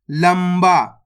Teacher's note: बा मा की मात्रा बा तो मिलकर बन जाएगा लंबा। दोस्तों इसके अंदर अपन ने आधा माँ का उच्चारण करा है